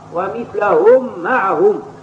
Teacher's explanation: مثلها وبين الميم التي بعدها، فلا يجوز حينئذ الإدغام لوجود فاصل. فالميم عندما قرأها هنا بالتسكين يتعين إدغامها بغنة في الميم التي تليها